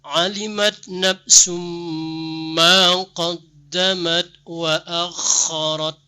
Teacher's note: Kha-nya benar-benar muncul di halaq ya. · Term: huruf kha, makharijul huruf kha